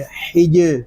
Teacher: جیم ساکن ہے، اس میں کلکلہ خوب ظاہر کریں گے.